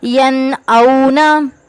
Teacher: نون ساکین ہے اس کے بعد حمزہ ہے تو غنہ نہیں کریں گے